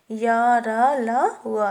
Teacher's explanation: इनका उच्चारण करते समय जीभ पूरी तरह से उच्चारण अवयवों को स्पर्श नहीं करती है। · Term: अंतस्थ व्यंजन